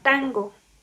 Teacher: Estamos ante una N nasal velar